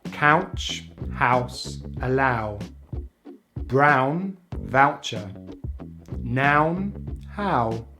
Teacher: we glide into the short vowel sound /ʊ/ by rounding the lips, closing the jaw and bringing the tongue into the center back of the mouth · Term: ow diphthong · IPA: /aʊ/